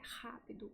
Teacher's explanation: no português potiguar, o R é geralmente uma fricativa velar